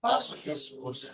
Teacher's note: জিহ্বার আগা এবং সামনের উপর ও নিচের চার দাঁতের আগার সাথে লাগিয়ে উচ্চারিত হয় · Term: সা সিন সদ